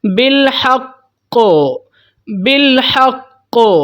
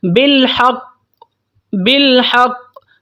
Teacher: مطلب بہت بڑا قلقلہ ہم نے کرنا ہے، جھٹکا اچھا خاصا اس کو دینا ہے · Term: قلقلہ اکبر